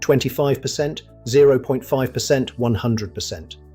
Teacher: The symbol percent is always pronounced percent with the stress on the second syllable.